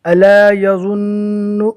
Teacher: نون کے پر تشدید ہے، نون مشدد کا ایک الف کے برابر گننا ہوگا